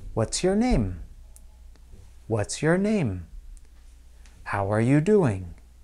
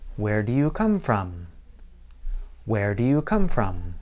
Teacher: In all of these cases, I used falling intonation. My voice drops a little bit, almost like gravity pulling down the ball.